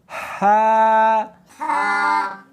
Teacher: اس کو حلق میں سے نکالنا ہے اور ساتھ میں ہوا بھی ہونی چاہیے. ہا نہیں پڑھنی بلکہ اس کو حلق میں سے نکالنا ہے، سینے میں سے نہیں نکالنا.